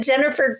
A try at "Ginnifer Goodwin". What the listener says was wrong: I think it's a soft G in her first name. It is Ginnifer Goodwin. It's not Ginnifer Goodwin.